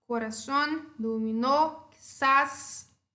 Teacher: Corazón é uma palavra que termina em N, certo? E a sílaba tônica é a última. Então, eu acentuo.